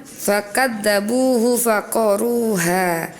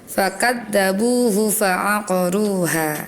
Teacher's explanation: Kemudian ada di surat As-Sams ada huruf yang tidak terbaca ya, huruf ain yang tidak terbaca